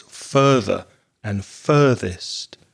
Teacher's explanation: the first vowel sound is er like in words like turn or learn or burn